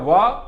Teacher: दंत ओष्ठ से केवल एक ही दांत और ओष्ठ होठ से उच्चारित होने वाला केवल एक ही वर्ण व